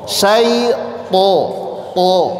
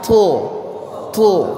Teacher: Ujung lidah ditempelkan ke usul as-sana al-ulya. Jadi ujung lidah tempel, kuat dulu nempelnya.